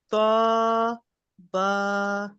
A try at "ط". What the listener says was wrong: طا با. तो को और मोटा करें, तो को मोटा कीजिए।